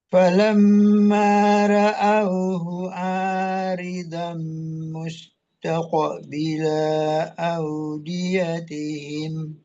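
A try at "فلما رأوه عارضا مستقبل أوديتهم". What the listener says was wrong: La-nya ke bawah panjang, padahal nggak ada mat ya. Falamma ra'auhu aridham mustaqbila audiyatihim. Ingat do ya, bukan dam tapi do, ro juga ya.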